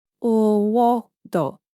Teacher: So the R sound will have to die, and O sound will have to gain prominence.